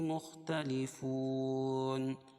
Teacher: واو ساکن سے پہلے پیش ہے اس لیے وہ مدہ ہوگا، اور وقفہ کی حالت میں ہے مد عارض وقفی ہوگا